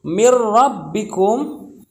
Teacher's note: Nun nya itu nggak kebaca tapi langsung masuk ke huruf RO nya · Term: idgham bila gunah